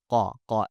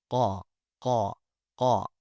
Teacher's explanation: letters Qaf and Kaf, they come from the rear of our tongue in conjunction with our uvula. The letter Qaf specifically, it comes from the back side of the uvula, up there by our palate, by the roof of our mouth, where it's soft and meaty, right? · Now, as a quick brief recap for you guys, letters Qaf and Kaf, they come from the rear of our tongue in conjunction with our uvula. The letter Qaf specifically, it comes from the back side of the uvula, up there by our palate, by the roof of our mouth, where it's soft and meaty